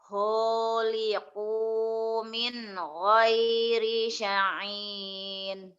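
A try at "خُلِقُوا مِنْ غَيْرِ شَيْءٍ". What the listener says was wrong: Syai'in biasa hamzah bukan ain. Bukan syai'in. Syai'in biasa aja.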